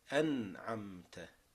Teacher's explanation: So when you say an'amta, you make the idhar with a noon and give it time. You don't say an'amta.